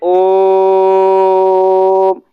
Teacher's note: जैसे ओम, ये पुकारने जैसा, या फिर कोई लंबा सुर के साथ जब उच्चारण होता है तो वहां पर प्लुत स्वर लगता है